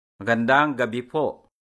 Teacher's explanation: The word for evening or night is gabi, which is stressed on the second syllable.